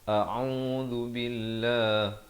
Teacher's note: zal di hujung lidah